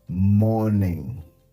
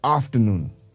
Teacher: while pronouncing the word the r in the word remains silent we don't pronounce the letter R